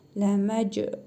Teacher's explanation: Cim hərfini qalqalə edərək vurğulu tələffüz edirik.